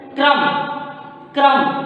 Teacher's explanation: तब अब इसका उच्चारण हम करेंगे, क आपका आधा हुआ, र अ पूरा हुआ और म अ मिलकर म हुआ, तो इसका उच्चारण हम लोग करते हैं क्रम। क्रम, क को फास्ट बोलेंगे, जल्दी बोलेंगे, र में अ का उच्चारण करेंगे, म अ में भी म का उच्चारण करेंगे। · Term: स्वर सहित